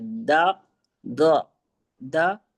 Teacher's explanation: जबान की करवट ऊपर के बाएं तरफ की दाढ़ों से दौद अदा होता है